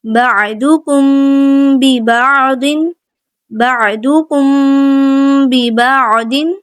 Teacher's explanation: جب بھی میم ساکن کے بعد با آ جائے گا تو وہاں پہ ہم غنہ کرتے ہوئے اخفاء کی طرح ہم نے میم ساکن کو چھپاتے ہوئے پڑھنا ہے · میم ساکن کے بعد با ہے تو اخفاء شفوی غنہ کریں گے